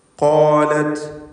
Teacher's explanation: ഖാഫും ദീർഘാക്ഷരമായ അലിഫും തഫ്ഖീം ചെയ്ത് തടിപ്പിച്ചുച്ചരിക്കുക.